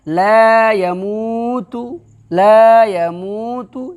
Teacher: یا زبر ہے تو جلدی، اس کے بعد وہ مدہ ہے تو کھینچ کر کے